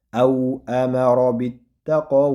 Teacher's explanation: alif maqsura bu cho'ziladi Ikki harakat cho'zib talaffuz qilsak bo'ladi.